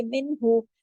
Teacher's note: سے، منہو دونوں ایک ایک حرکت پڑ جائیں گے، منہو، اور نون ساکن کے بعد ہا ہے، پورا اظہار ہوگا، اظہار حلقی، کیونکہ آگے ہا جو ہے حرف حلقی ہے